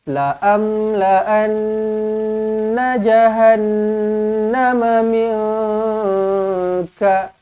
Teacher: Dekat nun ni kena dengungkan lah. Kena dengungkan dengan dua harakat. Nun sabdu wajibul gunnah.